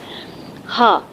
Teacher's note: حلق کے اگر ہم 3 حصے کر لیں، یعنی اپنی گردن کے، تو منہ کے قریب والا حصہ ادنیٰ حلق کہلاتا ہے، منہ سے دور والا حصہ اقصی حلق کہلاتا ہے، اور ان دونوں کے درمیان والا حصہ وسط حلق، ادنیٰ حلق، وسط حلق اور اقصی حلق۔ تو ہا جو ہے وہ اقصی حلق سے ادا ہوتا ہے، یعنی سینے والا ہا ہے